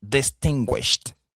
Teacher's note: Le ED ici se prononce T. Alors, pourquoi est-ce qu'on le prononce T? Parce que nous avons avant le ED ce qu'on appelle un voiceless sound. Le son ch est un voiceless sound.